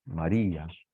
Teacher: Y aunque es una vocal cerrada y una vocal abierta, como la cerrada es tónica, es fuerte, no forma diptongo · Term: hiato